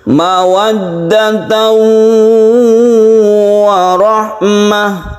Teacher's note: Jadi kita rasakan suara dengungnya itu masuk ke hidung.